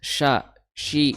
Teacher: syi makhrajnya adalah di tengah lidah bertemu dengan langit-langit atas